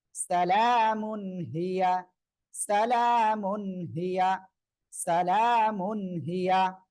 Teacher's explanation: তানউইন এর পরে ইজহারের উপর হা আসছে, তাহলে কি গুনাহ হবে? গুনাহ হবে না, স্পষ্ট করে পড়তে হবে